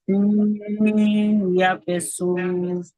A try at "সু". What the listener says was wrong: সু বলে টানছেন কেন? জি, তাহলে সুই বলে টানছেন কেন? সিন ইয়া পেশ সুই, সুই বলে ছেড়ে দিবেন।